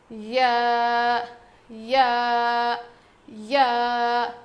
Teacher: زبان کے بیچ کے حصے سے یا ادا ہوتا ہے